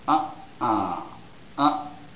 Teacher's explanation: the first syllable is stressed